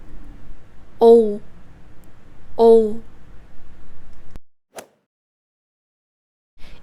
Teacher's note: In terms of mouth openness, your mouth is pretty closed when making this sound. Also, since it's a rounded vowel, your lips have to be rounded.